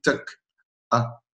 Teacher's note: quand on fait un son A, en fait, c'est qu'on a collé les cordes vocales et ensuite on les a ouvertes et ça a fait une sorte de petit tuck A. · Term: occlusion glottale